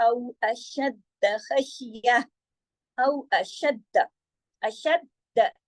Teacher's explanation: 2 دال ہے نا، دونوں کی آواز آنی چاہیے تشدید کی وجہ سے